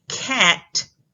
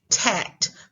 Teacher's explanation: we talked about earlier when a child is unable to make a K sound which is made towards the back of the mouth because the back of the tongue is making contact with the palate